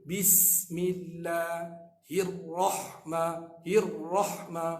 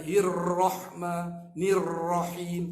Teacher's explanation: Huruf ra, huruf tikrar, dia ada bergetar. Hirrahma, jaga getaran tu bukan sampai 4, 5, 6 kali. Bukan sampai 4, 5, 6 kali, 2 kali sudah, 2, 3 kali sudah, dia tak banyak.